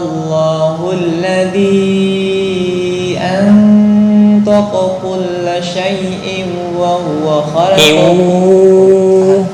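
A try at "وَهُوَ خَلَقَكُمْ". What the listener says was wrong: Nah, udah betul, tinggal idgham bi gunnah di ini. Wa huwa, itu ya, kurang lama.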